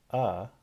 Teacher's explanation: so not open and not closed but in the middle okay the tongue is back and the lips are not rounded I like to say that the mouth is sort of flat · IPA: /ʌ/